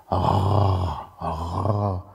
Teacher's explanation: Der gibt eigentlich einen uvularen Vibranten wieder, also sowas wie R.